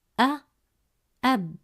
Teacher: When it's at the start of a word, Alif Hamza makes a glottal stop sound, which changes depending on the vowel it has. It can produce the sounds A, U, or I, based on the vowel it carries.